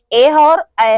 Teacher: कंठ और तालव्य दोनों से उच्चारित होने वाले हमारे दो वर्ड हैं, ए और ऐ है। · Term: कंठ प्लस तालव्य